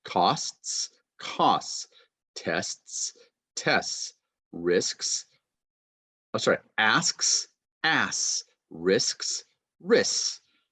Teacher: just no T, just S sound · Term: TH deletion